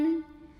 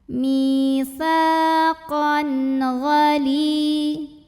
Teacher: Berikutnya ada hukum izhar halqi karena ada tanwin fathah yang bertemu dengan huruf halqi atau huruf tenggorokan yaitu ghain. Maka tanwinnya kita bunyikan dengan N jelas.